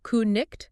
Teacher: No, in Old English, it would have been pronounced more like ku-nicht. So that K sound is pronounced, and then the C has that guttural sound.